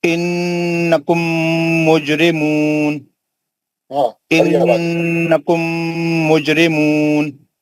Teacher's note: یہ میم ساکن کا ادغام ہے حرف میم میں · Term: میم کا ادغام